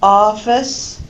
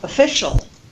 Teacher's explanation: Office, the stressed vowel ah, but when the stress changes and we have the word official, that o now becomes the unstressed vowel schwa